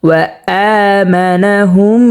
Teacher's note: মিম সাকিনকে গুন্না করে পড়ব